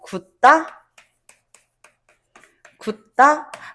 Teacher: 하나 종성자리가 없어지고 된소리로 발음되는 게 아니라요. 그대로 종성자리도 그대로 있지만 초성자리에 예사소리만 된소리로 발음이 된다